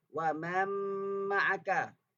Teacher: Di situ mim tu bersabdu tapi sebelumnya ada nun mati. Berlaku idgham. Kemasukan nun mati kepada huruf mim. Asalnya wa man tapi jadi wa man ma'aka sebab berlaku idgham.